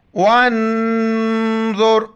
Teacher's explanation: ناک میں آواز پیدا کریں گے، دونوں کو موٹا کر کے پڑھیں گے